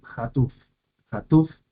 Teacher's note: la última sílaba es la que recibe el tono